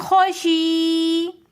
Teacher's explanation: وقفاً میں ہم خوشی تھوڑا سا کھینچ کر اس وجہ سے پڑھیں گے کیونکہ لاسٹ میں یا ساکن ہو جائے گی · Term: یا مدہ